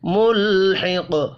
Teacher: بالکفار ملحق، ملحق لام ساکن ہے، قلقلہ نہیں کرنا، قاف حروف مستعلیہ ہے، پر پڑھا جائے گا. وقف کرنے کی صورت میں ساکن بھی ہوگا، ساکن ہو قاف تو قلقلہ کیا جاتا ہے